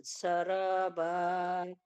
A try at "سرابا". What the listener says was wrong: قاعدے دیکھیے، قاعدوں کے مطابق پڑھیے، را بالکل سیدھی پڑھی آپ نے، سرابا، ادھر زیادہ دفعہ را آئے گی تو نیکسٹ ٹائم اگلی دفعہ آپ کی یہ غلطی نہ ہو، ٹھیک ہے؟ زبان کو اوپر اٹھائیے، را خود بخود موٹی ہو جائے گی، سیراج، سراب، اس طرح کر کے جتنے بھی آئیں گے تو آپ نے دھیان سے پڑھنے۔